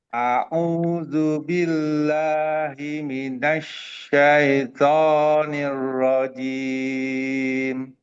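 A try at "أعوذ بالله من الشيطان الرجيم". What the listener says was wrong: Ya, sukunnya jangan tapi i. Syai, syaito. Coba syai.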